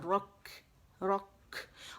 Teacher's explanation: پیچھے سے زبان کی جڑ اٹھا لینی ہے، را کا مخرج موٹا ہو جائے گا · رک، رک، کھ نہیں کریں گے، ٹھیک ہے. تو را موٹی ہوگی، اور کیف میں ہمس واضح ہوگا